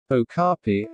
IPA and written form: oʊˈkɑːpiː (okapi)